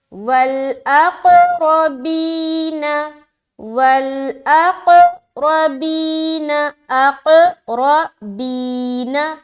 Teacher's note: واو لام زبر ول، حمزہ قاف زبر اق، پھر قلقلہ کریں گے اق · را کو موٹا رکھ رہے، زبر کی صورت میں موٹا رہے گا.